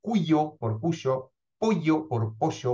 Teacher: se trata de un proceso de desconsonantización de ya es decir una disminución de la tensión articulatoria que se produce sobre todo en el contexto intervocálico lo que hace que no se produzca la fricción que distingue · La palatal ye o ye llega a articularse prácticamente como una semivocal i